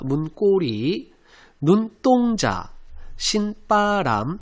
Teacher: 앞말이 울림소리고요. 뒷말이 발음상 된소리가 되고 있습니다.